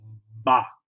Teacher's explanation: You probably noticed you put your lips together and go ba. But you put your lips together and kind of snap them out